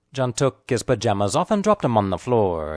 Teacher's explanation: the important content words are talk pajamas dropped and floor